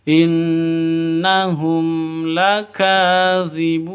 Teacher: Ka panjang 2 ketukan karena ada tanda berdiri di atasnya, mad asli. Zibun panjang boleh 2, boleh 4, boleh 6 ketukan, mad arid lisukun.